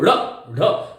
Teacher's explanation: हमें ऐसा लगता है कि कहीं जिह्वा अपने आप को ऊपर फेंक रही है। जैसे हम ताड़ते ना किसी को, ड़ ढ, इसीलिए इसका नाम ताड़न जात है। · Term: उत्क्षिप्त